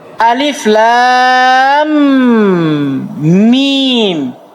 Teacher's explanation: Dia diidgham kepada mim yang setelahnya.